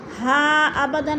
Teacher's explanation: ہا ابدن میں مد منفصل ہے، 4 الفی مد ہے، اس کو 4 الف کے برابر ہم نے کھینچ کر پڑھنا ہے۔